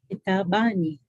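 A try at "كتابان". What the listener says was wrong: Exactly.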